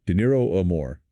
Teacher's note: a single R in the middle. Dinero amor has a much softer sound, It's almost like a quick tap of the tongue.